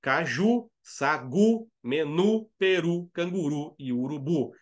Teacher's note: E essas palavras são todas oxítonas. A última sílaba é que é a sílaba forte.